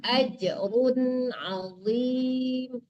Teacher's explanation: Ajrun harus jelas runnya. Mati nunnya harus jelas ya. Itu tanwin ya.